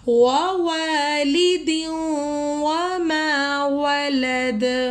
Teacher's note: وَأَنْتَ حِلٌّ بِهَذَا الْبَلَدِ وَوَالِدٍ وَمَا وَلَدَ، یہاں پہ والدیوں میں ادغام ہو رہا ہے، یہ 4 حرف ہے ادغام کے، یا واو میم نون، یہاں پہ تنوین کے بعد واو آ رہا ہے، تو ہم نے اس کو ملانا ہے اور لائک غنہ کی طرح، ہم نے غنہ کی طرح رنگنگ کرنا ہے